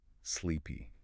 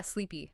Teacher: It has a long e sound in the middle and another long e sound at the end. You actually have to stretch your mouths into a slight smile to make that sound.